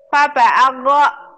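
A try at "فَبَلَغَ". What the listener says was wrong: Nggak mungkin alif ini. Lam.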